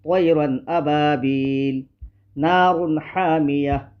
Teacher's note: تنوین کے بعد حروف حلقی کے 6 حرفوں میں سے حمزہ ہے۔ اس لیے نون ساکن اور تنوین کی آواز کو ظاہر کر کے بلا غنہ جلد پڑھیں گے